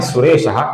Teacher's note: इसके आगे श है तो विसर्ग का उच्चारण हम हल्का सा श ऐसा करेंगे